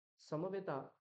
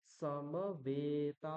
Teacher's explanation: প্রথম দুটো অংশে আমাদের হ্রস্ব উচ্চারণ করতে হবে অল্প সময় নিতে হবে দ্বিতীয় দুটো উচ্চারণ করতে গেলে আমাকে তার থেকে দ্বিগুণ সময় নিতে হবে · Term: দীর্ঘ উচ্চারণ